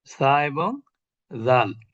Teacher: জিহ্বার আগা, উপরের দাঁতের আগা থেকে